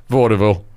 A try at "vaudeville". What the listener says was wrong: He really pronounces that E.